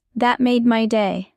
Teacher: Strong emphasis on made.